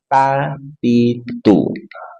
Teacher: ta ujung lidah dari permatasnya bertemu dengan gusi gigi seri atas